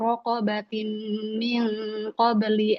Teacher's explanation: masuk masukin ke hidung idgamnya masukin ke hidung